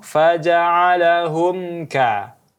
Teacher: Mim mati bertemu kaf maka hukumnya izhar syafawi harus dijelaskan tanpa adanya dengung